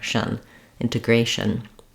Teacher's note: It's a very reduced vowel, shun. I'm just moving as quickly as I can from the sh to the n with whatever little vowel comes in there · There's almost no vowel in that final syllable. If there is going to be a vowel, it'll be a little sound, a little schwa, or a little sound.